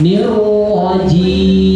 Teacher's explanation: Nirrajim itu 6 harokat